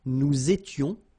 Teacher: Here, little liaison and final S not pronounced.